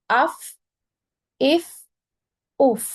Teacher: फा में थोड़ी सी देर के लिए आवाज कंटिन्यू रहती है, फौरन बंद नहीं होती।